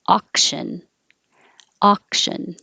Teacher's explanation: The au just sounds like ah, not ow.